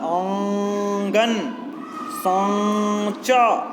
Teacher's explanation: ऐसे स्वरों का उच्चारण जो नाक और मुंह से होता है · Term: चंद्रबिंदी